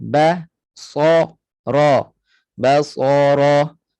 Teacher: Kemudian ba nipis, sad dan ra tebal.